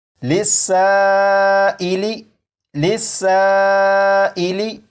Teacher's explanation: الف مدہ کے بعد حمزہ اسی لفظ میں موجود ہے، لہٰذا یہاں پر بھی مد متصل ہوگا اور اسے بھی 2 یا 2.5 الف کے برابر کھینچ کر پڑھیں گے